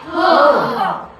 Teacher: आपला जो श्वास आहे तो काय होतो? जोराने बाहेर फेकला जातो. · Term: महाप्राण व्यंजन